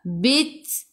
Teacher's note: Sikit sahaja angin pada huruf ta, sifat hurufnya hamas. Bila berhenti matikan dengan huruf ta.